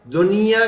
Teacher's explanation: नून जाहिर कर देते हैं और बस वैसे ही बगैर गुन्ने के चले जाते हैं। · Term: इजहार